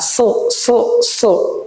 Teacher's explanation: eh kita akan baca dulu huruf SH diusahakan semaksimal mungkin eh bibirnya itu tidak berubah ya ketika huruf su Nah itu tidak manyun tapi datar